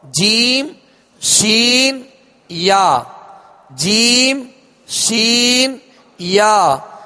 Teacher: زبان کے درمیان اور تالو کے درمیان سے جیم ادا ہوتا ہے، اور اس مخرج سے یعنی اس جگہ سے 3 حروف ادا ہوتے ہیں. · یہ درمیان زبان یعنی بیچ زبان اور بیچ تالو، اوپر کا بیچ تالو، اس سے ادا ہوتے ہیں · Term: حروف شجریہ